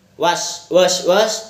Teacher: W adalah bunyi kontoid semi vokoid bilabial dan bersuara